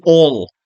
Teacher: All is not British English or American English for that matter. They say all with dark L after a vowel.